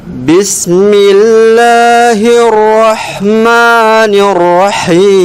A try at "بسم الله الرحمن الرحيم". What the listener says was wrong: Ulang ayatnya ya. Enggak apa-apa. Tapi B-nya perhatikan, B-nya juga bocor dia ada ininya.